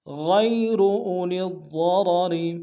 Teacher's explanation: من المؤمنین غیر اولی الضرر، غیر میں غین کو یا کے سامنے آئیں گے، یا لین بغیر کھینچ پڑیں گے، واو کو موٹا ادا کریں گے، اولی الضرر میں لام کو ضاد کے سامنے آئیں گے، ضاد کو موٹا ادا کریں گے، شد زور دیں گے، را کو موٹا ادا کریں گے، دوسرے را کو باریک ادا کریں گے۔